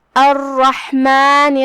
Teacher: کلمت الرحمن میں یہاں را پہ تشدید ہے. 2 حرف کے برابر ہم را کو پڑھیں گے اور اسے تفخیم سے بھی کیونکہ اس پہ تشدید زبر ہے.